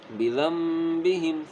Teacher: یعنی کہ ہم یہاں پر میم کی آواز نکالیں گے کیونکہ آگے با ہے نا